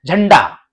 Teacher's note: जैसे झ के ऊपर अनुस्वार है, अंग की मात्रा है, तो इसका जो उच्चारण है वो अण के रूप में होगा।